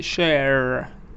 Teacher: that R is clear so all the r's are pronounced in North America